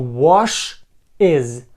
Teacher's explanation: закінчення ES і будемо його вимовляти як із Ми кажемо ваш із тут в нас буде кущ Буш так